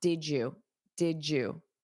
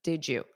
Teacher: this DY sound combination, when you say it quickly, it creates a j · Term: J sound